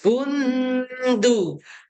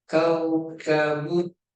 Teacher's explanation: Bun, hujung lidah dekat gigi ya, jangan pada langit-langit.